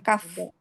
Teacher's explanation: Pangkal lidah. Pangkal lidah agak sedikit ke bawah ya. Bertemu langit-langit yang keras. Keras. Kalau lunak itu kof.